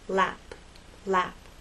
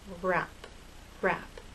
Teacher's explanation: But with R, your lips are more rounded and a little more tense.